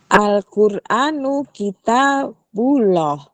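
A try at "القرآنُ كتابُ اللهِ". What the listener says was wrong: Nah, itu hi-nya kita tungguin ya. Harus bunyi ya. Hi-nya harus bunyi. Al-Qur'anu kitabullahi.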